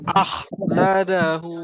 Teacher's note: Kalau boleh sampai rasa anak tekak tu bergetar. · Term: huruf kha